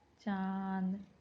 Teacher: वड़ों के ऊपर लगने वाले चंद्रबिंदु को अनुनासिक कहा जाता है इसका उच्चारण नाक और गले की सहायता से किया जाता है